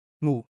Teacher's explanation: your tongue touches the roof of your mouth at the back, just like at the end of sing, but at the beginning of the word